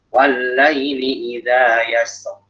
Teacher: Ro sebelumnya sukun, sebelumnya fathah dibaca tebal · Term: tafkhim